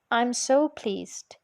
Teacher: But so and such can also occur, as the earlier examples show, in questions and directives. Additional emotive emphasis is achieved by assigning a nucleus to so and such.